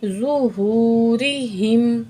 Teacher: واؤ مد ہے، دو الف کے برابر کھینچ کے پڑھیں گے